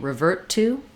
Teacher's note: If I'm saying revert to, I'm just going to link that T to the next T.